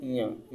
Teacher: ञ जो है नासिक्य व्यंजन है। नाक से आवाज आती है।